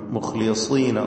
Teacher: മുഖ്ലിസീന, മുഖ് എന്ന് പറയുമ്പോൾ ഖായിന് തഫ്ഹീമാണ്, ശേഷം മുഖ്ലിസീന സ്വാദിനും തഫ്ഹീം, പക്ഷേ സ്വാദിന് കസ്രായതുകൊണ്ട് കുറഞ്ഞ തഫ്ഹീം മാത്രമാണ് ഉണ്ടാവുക.